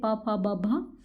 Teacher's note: उच्चारण दोनों होठों के स्पर्श से होता है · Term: उष्ट